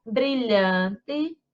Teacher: Então, ó, a sílaba mais forte é a penúltima.